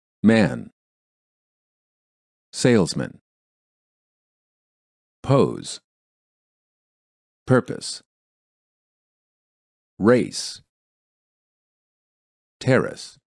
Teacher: The first word of the pair has only one syllable, so the vowel must be fully pronounced. The second word has two syllables, with the second syllable reduced. Even though the ending of the second word is spelled exactly the same as the first word, the vowel is pronounced differently because it is part of the reduced syllable.